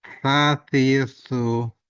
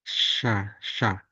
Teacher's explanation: Jadi ujung gigi, ujung lidah bertemu ya lebih di atasnya gigi atas.